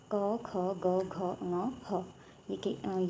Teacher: ये वाले व्यंजन जो हैं कंठ से निकलते हैं